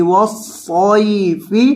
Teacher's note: وقف کریں گے، فا کو ساکن کر دیں گے وقفاً